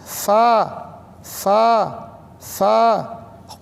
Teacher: فا یہ اوپر کے دانت گیلے حصے میں لگیں · جب فا پڑھنے لگیں تو دونوں ہونٹ ہمارے ملنے نہ پائیں، نہیں تو پھا ہو جائے گا. پھا نہیں پڑھا جاتا.